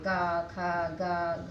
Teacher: जब हम बोलेंगे तो वो आवाज़ हमारे कंठ से निकलती है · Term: कंठस्थ